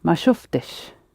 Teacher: So the I sound in the masculine is a helping vowel and not part of the tail because of the f, t, sh coming together.